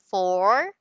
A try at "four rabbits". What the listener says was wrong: Do not forget the S, huh? Do not forget the S.